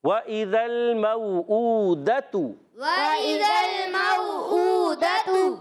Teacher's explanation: اب دیکھیں واو ساکن سے پہلے زبر آ رہا ہے تو یہ ہو گیا واو لین. واو لین ہمیشہ نرمی سے ادا کرتے ہیں بغیر کھینچے